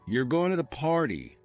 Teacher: if you say, you're going to the party with a flat tone, it's just a statement. But if you raise your voice at the end, you're going to the party, it becomes a question.